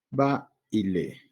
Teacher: vemos una vocal abierta, ¿sí? Sonido baja hacia una vocal cerrada. Y a nivel de palabra, va y lee, ¿no?